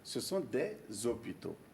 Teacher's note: Puisque le H est muet, la liaison peut se faire.